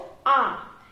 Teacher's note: এই আ যখন আমরা বলবো তখন জিহ্বাটা একদম নিচে অবস্থান করবে, এই জন্য আকে নিম্ন স্বরধ্বনি বলা হয়।